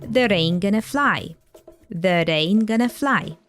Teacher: we've got here a flap T or D sound in the word that, and it gets linked to the following word.